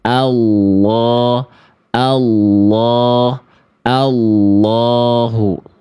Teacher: langsung masuk ke huruf lamnya tanpa menyisipkan huruf wau sukun